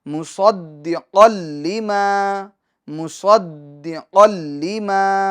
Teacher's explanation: تنوین کے بعد حروف یرملون میں سے لام آ رہا ہے تو لہٰذا ادغام ہوگا، اور ادغام بلا غنہ ہوگا۔